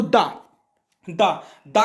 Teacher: तो ता वर्ग दंत से। तो जो दा बोला जाएगा वो कहां से बोला जाएगा, दंत से।